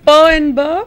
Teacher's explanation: p and B they are bilabial plosives